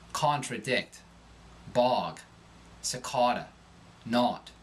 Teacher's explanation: The short O becomes awe